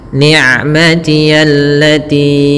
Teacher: ain sifatnya bainiyah antara syiddah dengan rokhawah, tidak terlalu dialirkan suaranya dan tidak boleh diputus juga, tapi tengah-tengah.